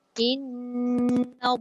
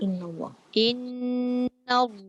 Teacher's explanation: Dah betul dah dalam lafzul jalalah tu tebal. Tapi bibirnya bergerak sekali.